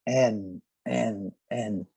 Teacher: Se você colocar o dedo na garganta, você vai notar que suas cordas vocais vão vibrar.